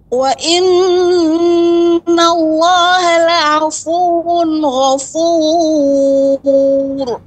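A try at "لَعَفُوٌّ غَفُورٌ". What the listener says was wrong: Nah, pada waw yang bertasydid, la'afuwun ghafur.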